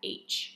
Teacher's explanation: The H sound is made by blowing air through the mouth like a whisper